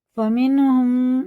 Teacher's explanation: میم ساکن کے بعد میم ہے تو یہ غنہ کر کے پڑھا جائے گا، اس کو کہتے ہیں ادغام شفی۔